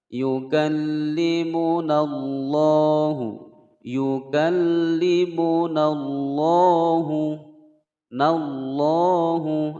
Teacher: ada lam jalalah sebelumnya fathah dibaca tebal ya. Tidak boleh membaca la yukallimunallahu, salah ya.